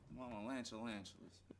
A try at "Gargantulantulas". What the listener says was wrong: Gargantulantulas. No, with a G-A-R. Gargantulantulas.